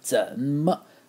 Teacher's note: It's a good word to hit hard. 怎么 with that third tone on the 怎 and then 么 just neutral tone. Great word.